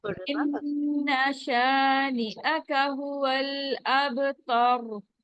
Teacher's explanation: یہاں پہ بھی را رکتے ہوئے ساکن ہو جائے گا، تو پھر ہم پیچھے والا حرف دیکھیں گے تو وہ اس پہ زبر ہے، تو ہم اس کو موٹا پڑھیں گے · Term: را موٹا